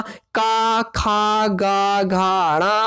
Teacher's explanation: तो का, खा, गा, घा, णा, इनका उच्चारण स्थान भी क्या होगा? कंठ होगा। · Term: का वर्ग